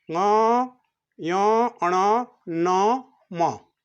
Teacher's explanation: अनुनासिक, जिसका उच्चारण मुख से और नाक से किया जाता है। मुख से तो कहना ही पड़ेगा, बिना मुख से तो आप आएगा नहीं, और साथ साथ नाक से भी कहना आगे पड़ेगा।